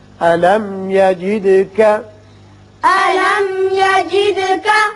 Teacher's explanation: میم پر اظہار ہوگا, دال کی صفت قلقلہ.